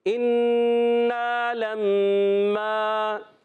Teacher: نون مشدد میم مشدد دونوں میں ایک ایک الف کا غنہ